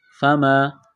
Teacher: الف سے پہلے زبر ہے، حروف مدہ الف ہے، ایک الف کے برابر کھینچنا ہے